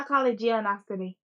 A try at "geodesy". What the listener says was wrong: There's no N. Why are you saying geonosity? It sounds like you're saying geonosity.